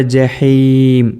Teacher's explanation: ജഹീം ഇവിടെ മീമാണ്, ജഹീൻ എന്ന് പറയരുത്